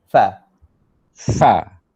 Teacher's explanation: Ujung gigi depan mesti kena perut bibir.